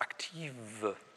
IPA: ʔakti:və